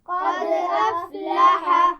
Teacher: قلقلہ واضح ہونا چاہیے، حمزہ کی آواز واضح ہونی چاہیے